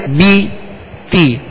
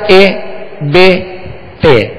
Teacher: جب زیر ادا کریں گے تو آواز کو گرا دیں گے، آواز کو گرا دیں گے۔